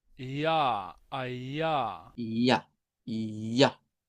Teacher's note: Y pueden ver que son dos consonantes cercanas. Las dos son consonantes que se hacen en el palato, las dos son vibrantes.